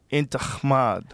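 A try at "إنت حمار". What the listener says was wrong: But see, you're saying kh. It's h.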